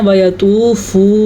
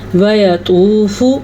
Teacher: وَيَطُوفُ، یا کو لمبا نہیں کرنا، ویا یا زبر یا اتنا سا لمبا کرنا ہے، واو زبر وا یا زبر یا ویا طوف، البتہ تو پیش واو ساکن تو، اسے واو مدہ کہتے ہیں، اس کو کھینچ کے پڑھا جاتا ہے، اس کو لمبا کریں گے۔ اور فا کو پھر سے لمبا نہیں کرنا۔ اکثر لوگ کیا غلطی کرتے ہیں، اکثر لوگ پڑھتے ہیں وَيَطُوفُ، فو کرنا غلط ہے، فا پیش فو، بس اتنا سا پڑھنا ہے وَيَطُوفُ۔